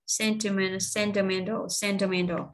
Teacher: Nhấn nhấn ở vần số 3 nè, man nè, vần 3 và nó có hai cái dấu, hai dấu chấm, một dấu nhấn, vậy là nó có 4 phần.